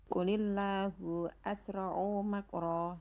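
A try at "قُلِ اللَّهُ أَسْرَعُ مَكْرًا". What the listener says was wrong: Nah, di sini asra'u agak sedikit keseret ainnya. Jadi kan kayak jadi panjang. Harusnya pendek saja. Qulillahu asra'u makra, bukan asra'u makra. Jadi kan agak keseret ya. Jadi akhirnya kayak panjang. Harusnya pendek saja.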